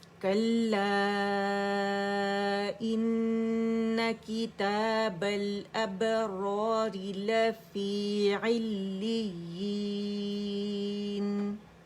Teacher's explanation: یہاں پہ را کو الف جہاں اسٹریچ کر رہا ہے وہاں موٹی پڑی جائے گی, جہاں الف مدہ بن رہا ہے